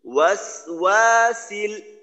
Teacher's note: সিনের জজমের উচ্চারণটা স্থির ভাবে করবো, এটা যেন ওকারের মতো ওয়াসো এমনটা না হয়